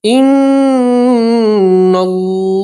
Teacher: نون کے اوپر تشدید ہے. گنہ کرنا ہے.